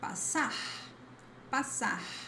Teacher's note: It always sounds like s, a clear voiceless S sound